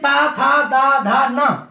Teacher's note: ये दंत वर्ण है, दांतों के सहयोग से उच्चारित होते हैं। इनमें जब तक अपनी जीभ टच दांतों से नहीं करेगी, तब तक अपन ता वर्ग के जितने हर वर्ण हैं तो अपन नहीं वांच सकते।